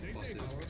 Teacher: When we say possible, we pronounce a vowel between the B and the L.